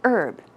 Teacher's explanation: usually in North America we say herb as you see here there is no H sound